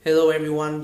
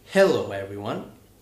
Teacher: So in two words, hello and everyone, the stress is on the first syllable.